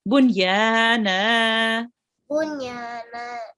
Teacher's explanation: Make sure to prolong the na for 2 seconds.